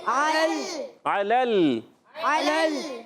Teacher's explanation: درمیان والا سا عین پر زبر ہے لام پر زبر ہے لام کا زبر دوسرے لام سے ملائیں گے لام کو ہلائیں گے نہیں دوسرا لام ساکن ہے